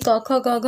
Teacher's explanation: ये जो ध्वनियाँ हैं वो क्या है, कंठ से निकलती हैं, तो इसीलिए इन्हें कंठ ध्वनियाँ कहा जाता है।